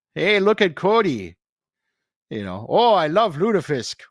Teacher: in Minnesota you've got to draw out the vowels